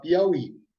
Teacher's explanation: a palavra ela é oxítona porque a sílaba tônica é a última